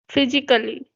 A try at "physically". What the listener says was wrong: You have jar sound when you say s. You are getting jar sound little bit like physically. It should be physically. See, sa, physically, physically.